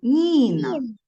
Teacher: стоїть голосний звук і цей звук пом'якшує попередній звук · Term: М'який приголосний